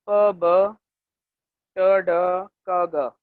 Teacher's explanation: ये प्रोड्यूस होती हैं जो हवा है या एयर स्ट्रीम है जो आपके लंग से आ रही है, उनको हम ब्लॉक कर देते हैं। ब्लॉकिंग ऑफ एयर स्ट्रीम है। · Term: स्टॉप्स